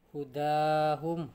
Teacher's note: huda dibaca 2 harokat 1 alif